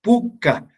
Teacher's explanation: la mayor fuerza de voz está en la penúltima sílaba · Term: acentuación grave